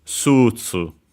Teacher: the accent is simply just like in English, and so on the first syllable, on the su, so sutsu.